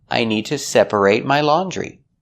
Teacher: the reason we pronounce it eight in the verb separate is because that syllable is stressed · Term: long a sound